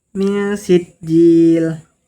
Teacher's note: Ketiga, min sijil ada ikhfa hakiki. Karena nun sukun bertemu huruf sin dibaca nun dibaca samar disertai dengung.